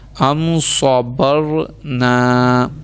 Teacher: را ساکن سے پہلے زبر ہے تو اس کو موٹا